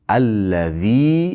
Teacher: Allazi ikki harakat miqdor cho'zasiz.